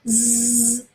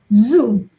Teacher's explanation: voiced okay alveolar fricative sound